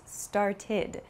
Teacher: has a few different pronunciations so for example start becomes started it has an ID sound it's not an ed sound but an ID sound